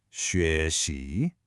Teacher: That's called the neutral tone. It's just short, light, and it gets its pitch from the syllable before it.